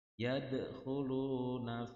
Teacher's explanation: Yadkhuluna ada semacam suara serak kha